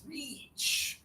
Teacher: your tongue is high in your mouth, and there's just a little air. It's reach. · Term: E sound